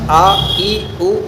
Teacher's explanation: تو آواز حلق کے سب سے اندر والے حصے اقصائے حلق سے ادا ہوتی ہے